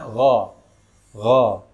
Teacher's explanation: An'amta alaihim ghairil gha, huruf ghain ini memiliki sifat isti'ala, yaitu sifat hurufnya dibaca tebal.